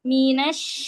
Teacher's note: Huruf syin keluarnya dari tengah lidah ya. Dari tengah lidah.